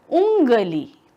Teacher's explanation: अनुनासिक मतलब थोड़ा सा नाक से छूता हुआ, थोड़ा सा मुंह से छूता हुआ